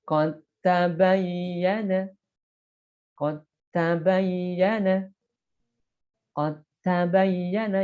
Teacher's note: Huruf dalnya tidak dikolkolahkan, tapi dimasukkan ke huruf ta.